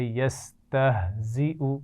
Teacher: ہا کے مخرج کو واضح کرنا ہے، زا میں سیٹی ہونی چاہیے